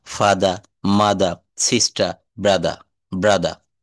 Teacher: শব্দের শেষে যদি আর থাকে, তাহলে সেই আর এর উচ্চারণ হবে না। কেমন? শব্দের শেষে আর থাকলে আর এর উচ্চারণ হবে না।